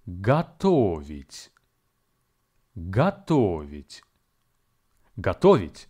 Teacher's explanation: The verb готовить has three syllables: go, to, vить, and the stress falls on the second syllable. Please be advised that the first syllable go is actually pronounced as ga.